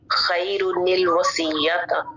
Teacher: اور اس کے بعد نون قطنی جو ہے کہ دو کلموں میں دو ساکن جو ہے وہ 2 کلموں میں اس طرح جمع ہو کہ پہلا ساکن تنوین کا نون ہو اور دوسرا ساکن حمزہ وصلی کے بعد آنے والا ہو، تو تنوین کے نون کو ہم کسرہ دے کر پڑھیں گے. مثلا خیر الوصیت.